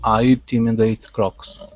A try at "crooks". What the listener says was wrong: Instead of craw, cruh. Close the mouth just a little bit. Cruh, crooks. I intimidate crooks.